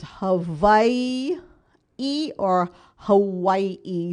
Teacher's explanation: the w can be pronounced as a w sound or a v sound so either way is correct